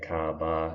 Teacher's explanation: you're sort of dropping off the r at the end of most of your words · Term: non-roticity